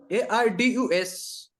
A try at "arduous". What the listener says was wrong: Number two is arduous is pronounced. D is pronounced as J. Arduous. It's not arduous. Arduous.